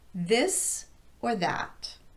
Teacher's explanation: I was using choice intonation there, which has an up-down pattern.